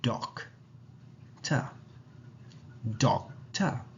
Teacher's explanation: We say doc in a stressed manner, and the schwa part with the t in a relaxed tone. Remember that the schwa is always relaxed in any instance.